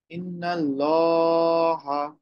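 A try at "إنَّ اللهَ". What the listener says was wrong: আচ্ছা, ইন্নাতে আরেকটু অপেক্ষা করতে হবে।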